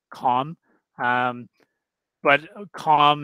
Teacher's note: the L will be silent